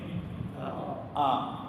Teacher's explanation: ഉറവിടം തൊണ്ടയുടെ താഴെ അറ്റമാണ് തൊണ്ടയുടെ താഴെ അറ്റത്തു നിന്ന് തന്നെ വരണം ആ എന്നത് അപ്പോൊ അതങ്ങനെ അവിടുന്ന് മുറിച്ചെടുത്തു വെച്ചിരിക്കുന്നത് പോലെ തന്നെ വരണം മലയാളത്തിൽ